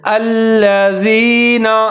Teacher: حمزہ کے اوپر زبر ہے، لام کے اوپر تشدید اور زبر ہے، لام مشدد ہے تو حمزہ اور لام دونوں ملا کے پڑھیں گے، مضبوطی کے ساتھ پڑھیں گے۔ جیسے الذین، آگے زال ہے، اس کے نیچے زیر ہے تو زال کا خیال رکھنا ہے، اس کو ظاہر کر کے پڑھنا ہے، سیٹی نہیں بجانی۔